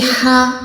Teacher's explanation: ہا کو ہم نے حلق کے نیچے والے حصے سے ادا کرنا ہے، جسے ہم سانس لیتے ہیں نا ویسے ہا، اوکے۔